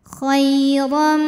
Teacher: Huruf ra dibunyikan secara tafkhim karena harokatnya fathah tanwin. Cara bacanya dibunyikan dengan tebal.